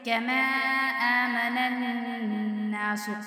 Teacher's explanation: حمزہ کھڑی ہے اور نون مشدد ہے تو غنہ کریں گے